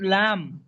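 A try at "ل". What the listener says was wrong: মাশাল্লাহ ভাই, অনেক সুন্দর বলেছেন, কিন্তু টান দিতে হবে। লাম কত আলিফ পরিমাণ টান? 3 আলিফ পরিমাণ টান দিতে হবে।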